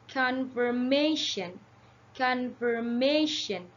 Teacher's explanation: the primary stress is on the third syllables